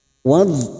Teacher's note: Wad, huruf wad sukun. Hati-hati jangan sampai memantul, karena bukan qalqalah, kita tahan. Dan huruf wad mempunyai sifat istithala.